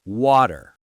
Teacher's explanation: In American English, when a T is between two vowel sounds, we get a little lazy and turn it into a soft D sound. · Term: flap T